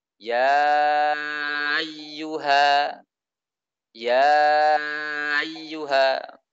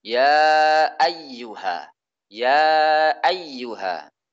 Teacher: Di antara sifat yang dimiliki oleh hamzah itu jahar. Jelas. Suaranya jelas